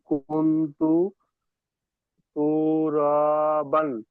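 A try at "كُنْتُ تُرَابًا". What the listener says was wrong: তু টান হয়ে যাচ্ছে কেন? কুন তু তু রবান।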